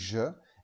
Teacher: Sauf que quand tu dis je, eh bien, non seulement tu produis un son de frottement dans ta bouche, mais il y a aussi tes cordes vocales qui vibrent. Le rôle des consonnes, c'est de sonner avec, consonare en latin. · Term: son je